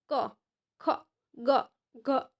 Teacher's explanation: કંઠ્ય એટલે કે ગળામાંથી જે શબ્દ બોલાય છે